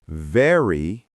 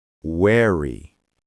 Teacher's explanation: For v, your top teeth touch your lower lip. For w, your lips make a small circle.